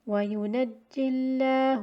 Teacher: again the Ya is dropped in continuation in Wasl because of the meeting of two Sukoons. So therefore we look at the Kasra on the Jim. · we look at the Kasra on the Jim. So therefore the Lam of Ism al-Jalala will take Tarqeeq.